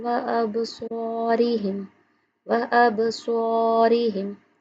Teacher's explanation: سواد ہمیشہ منہ گول کر کے پڑھا جاتا ہے، موٹا پڑھا جاتا ہے